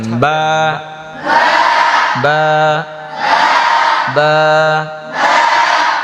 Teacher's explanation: ঠোঁটের ভিজা অংশ থেকে এই যে বা, ঠোঁট মিশাবেন আর ছাড়বেন, বা বা বা। তারপর তা তা তা।